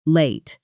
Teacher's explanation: that final syllable opens up into a fuller late sound